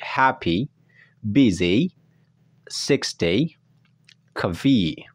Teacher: suara I panjang yang dibaca namun tidak terlalu panjang, jadi setengah-setengah. Antara panjang dan pendek itu biasanya ada di akhir kata yang berejakan Y atau Y and double E.